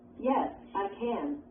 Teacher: When can is at the end of a sentence. The vowel sound usually is not reduced. It is pronounced with the vowel sound A, like the A in math. It also is stressed.